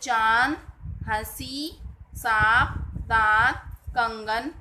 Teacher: और इसे कहते हैं अनुनासिक। इसका उच्चारण नाक और गले दोनों से होता है